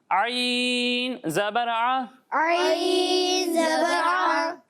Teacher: جب ہم ہا اور عین کی ادائیگی کریں گے تو ان دونوں کو حلق کے درمیان والے حصے سے پڑھیں گے